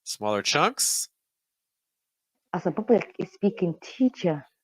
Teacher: some British English influences kind of going on you hear especially on teacher with the dropped R weakened R at the end